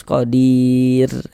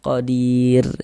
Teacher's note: sebelumnya ada huruf ya sukun, maka huruf r sukunnya dibaca tarqik, dibaca tipis. E kita baca tipis qadir seperti itu.